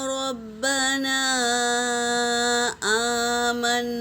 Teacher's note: وَإِذَا سَمِعُوا مَا أُنزِلَ إِلَى الرَّسُولِ تَرَىٰ أَعْيُنَهُمْ تَفِيضُ مِنَ الدَّمْعِ مِمَّا عَرَفُوا مِنَ الْحَقِّ، يَقُولُونَ رَبَّنَا آمَنَّا، غنہ کریں گے میری بہنوں۔ ربنا میں مد ہے، مد پورا ادا کریں گے اور پھر اس کے بعد غنہ بھی کریں گے۔